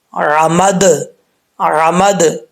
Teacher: جب اس میں قلقلہ آئے گا تو پھر دال کا ساؤنڈ آئے گا، آواز لوٹے گی. کیسے؟